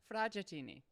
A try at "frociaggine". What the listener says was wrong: It's not chini. It's not chini. Fragogine.